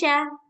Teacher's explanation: itu yang dari tengah lidah. Jadi cara bacanya sya. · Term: shin